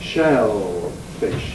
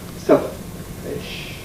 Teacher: So we get more drawn out shellfish to exaggerate it versus clipped selfish.